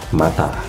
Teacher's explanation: Jadi dalam huruf M ini, vokal M dia itu ee bibir tertutup tapi udara keluar lewat hidung yang biasa disebut bunyi nasal. Contohnya ada dalam kata mata seperti itu.